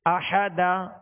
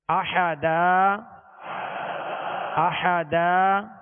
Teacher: 2 زبر کی تنوین کو الف سے بدل کر وقف کریں گے